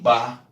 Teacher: Porque a consoante B é bilabial. Ela fecha a boca. Mas quem faz a boca abrir é o A.